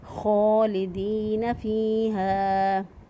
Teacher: فی ناری جہنم خالدین فیہا، خالدین فیہا، خا کو ادا کرتے وقت ہونٹ گلائی کی طرف تھوڑا سا مائل ہو جاتے ہیں۔ خا جو ہے یہ ادنی حلق سے ادا ہوتا ہے، یعنی گلے کا وہ حصہ جو کہ منہ کی طرف ہوتا ہے، وہاں سے دو حروف ادا ہوتے ہیں، غین اور خا، اور خا کی ادائیگی کے وقت ہونٹ جو ہے وہ گلائی کی طرف مائل ہوتے ہیں، اس لیے اس کو پر پڑھیں گے۔